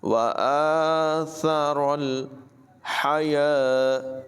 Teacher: حا کی آواز حلق سے نکالیں گے، حلق کے درمیان والے حصے سے۔